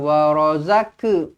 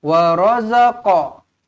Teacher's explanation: huruf qaf mati lantun, dia bukan ke tak, dia qa. Wa razaqa. Bukan wa razaka, bukan macam tu. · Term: qalqalah